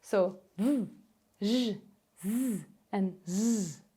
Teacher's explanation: The other fricative consonants we have are voiced, so they have a pitch